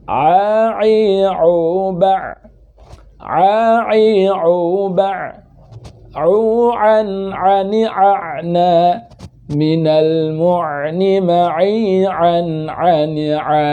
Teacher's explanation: Bukan juga dari ujung kerongkongan sehingga terdengar seperti hanya kha ya. Ain itu dari tengah kerongkongan dengan sifat tawassutnya